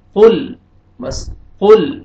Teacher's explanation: لام ساکن ہے، آپ نے لام کو نہیں کھینچنا ہے، ہلانا نہیں ہے آپ نے اس کو